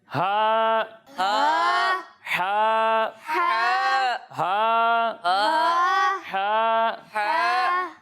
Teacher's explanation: جب ہم ہا کی ادائیگی کریں گے تو اسے ہم حلق کے نیچے والے حصے سے پڑھیں گے, اور جب ہم ہا کی ادائیگی کریں گے تو اسے حلق کے درمیانے حصے سے پڑھیں گے